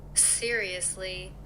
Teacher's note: Pronounce the O here with the relaxed vowel O, like the first vowel in about.